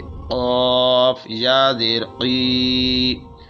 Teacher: اب قاف جو ہے یہ حروف قلقلہ میں سے، اور اس کو موٹا کر کے پڑھیں گے اور اس کے اندر قلقلہ کریں گے